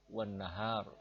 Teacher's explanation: ada non syiddah dua dan bertemu langsung dibaca hunah atau mendengung